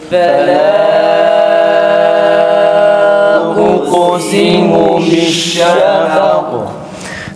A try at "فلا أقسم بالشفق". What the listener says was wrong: Tekrar edelim, meddi münfasılı uzatalım.